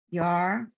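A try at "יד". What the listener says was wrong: Yad. That's a Dalet. It's hard.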